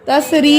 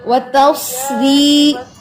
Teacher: صاد کی سیٹی نمایاں کریں